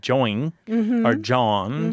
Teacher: So joint kind of the T sound becomes softer and it becomes join or jawn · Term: lenition